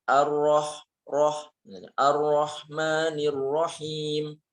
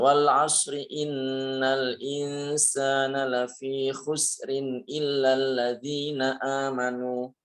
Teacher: Cuman memang ini ketebalan dan ketipisan saja yang berbeda itu. Jadi kalau ro, lebih tebal. Kalau ri misalnya tipis, seperti itu.